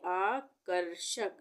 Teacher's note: मुर्धन्य स से पहले आधे र का उच्चारण हो रहा है